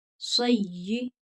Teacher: या को सख्ती के साथ पढ़ेंगे क्योंकि या मुशद्दद है